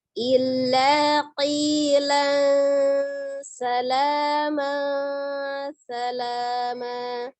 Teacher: Ikhfa itu artinya samar ya, tetapi samarnya disertai dengan gunnah, maka dia ditahan